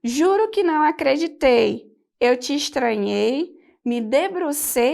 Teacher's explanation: Um exemplo de assonância: juro que não acreditei, eu te estranhei, me debrucei sobre teu corpo e duvidei, e me arrastei e te arranhei, e me agarrei nos teus cabelos. A gente percebe nesse trecho da canção do Chico Buarque que houve a repetição do ditongo ei, que é chamada justamente de assonância.